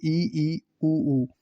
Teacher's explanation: तो सर्वप्रथम अपन पढ़ेंगे संवृत स्वर, यानी जब संवृत स्वरों का उच्चारण किया जाता है तो जीव्या का अग्र भाग अधिक ऊंचाई पर होता है, जिससे मुख बंद प्राय होता है · यानी संवृत स्वर वो होते हैं, मुखाकृति के आधार पर स्वरों को चार भागों में बांटा गया है, जिनमें संवृत स्वर यानी मुंह बिल्कुल बंद रहता है, बहुत कम खुलता है, न के बराबर खुलता है। तो इनमें जो संवृत जो स्वर होते हैं इसमें चार होते हैं, ई और ऊ।